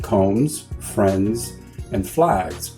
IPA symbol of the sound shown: z